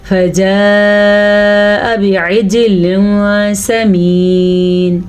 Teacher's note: جیم کے اوپر ساکن ہے تو یہاں پہ جھٹکا پیدا ہوگا